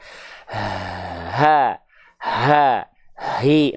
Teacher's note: ada nafas tapi ada suaranya keluar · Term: hams dan rokhawah